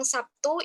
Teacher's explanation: itu kan penulisannya SABTU, tapi membacanya kan Sabtu kayak SAPTU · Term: asimilasi